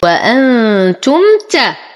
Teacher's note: ميم ساكنة وبعدها التاء، فالحكم إظهار شفوي بدون غنة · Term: اظهار شفوي